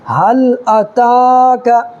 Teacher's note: کھڑا زبر ایک الف برابر اس کو بھی کھینچنا ہے ، اس لیے کہ کھڑا زبر برابر ہوتا ہے الف مدہ